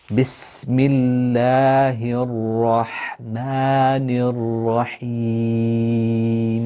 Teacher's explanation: Again, the scene needs to be elongated, the ha, burst of air when you pronounce the ha from the middle of the throat, the upper jaw going up when you say the word of Allah, and the ma.